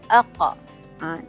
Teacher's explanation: Terputus suara tu bila? Bila pangkal lidah naik ke langit atas. Pangkal lidah, maknanya permulaan lidah yang bahagian dalam ni naik ke langit atas. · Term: huruf qaf